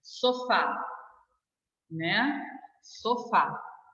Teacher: Na palavra sofá, eu digo para você que o A é até chamada de vogal tônica.